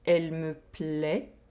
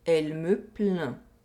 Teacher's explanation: we have an oral vowel sound and a nasal vowel sound. We have the E sound in the first sentence and the un sound in the second sentence.